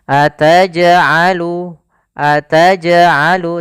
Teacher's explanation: Qalqalah adalah pantulan dalam sebuah bunyi gitu ya. Bunyi jimnya kita pantulkan.